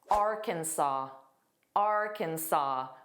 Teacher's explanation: Arkansas, which does not look like the spelling. So notice that silent s, the very last s is silent. So it's saw.